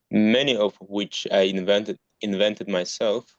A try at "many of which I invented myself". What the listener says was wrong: Yeah, yeah, that's it. So I think it was the V in invented that I noticed, but it's great now.